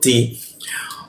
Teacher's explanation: menggunakan ujung lidah ditempelkan ke gigi ya